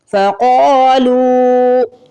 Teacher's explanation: قاف کو موٹا بھی پڑھیں گے، قاف کو کھینچ کے بھی ادا کریں گے الف مدہ کی وجہ سے. لام کو کھینچ کے ادا کرنا ہے واو مدہ کی وجہ سے.